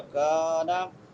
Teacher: کاف باریک ہے اور کاف کے بعد الف مدہ ہے